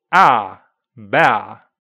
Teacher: Old-fashioned RP can start and end more open.